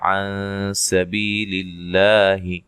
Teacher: یہاں نون ساکن کا اخفا مع الغنہ ہے، باریک اخفا ہے۔ بی یا مدہ ہے، للہ لفظ اللہ کے لام کو باریک پڑھا جائے گا، اس سے پہلے حرف پر زیر ہے۔